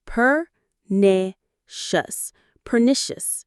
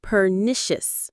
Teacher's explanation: The stress is on the knee in the middle.